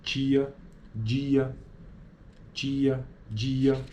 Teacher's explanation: os articuladores produzem uma obstrução completa na passagem da corrente de ar através da boca e o véu palatino encontra-se levantado como nas oclusivas. Na fase final dessa obstrução, quando se dá a soltura da oclusão, ocorre então uma fricção decorrente da passagem central da corrente de ar, como nas fricativas. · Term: consoantes africadas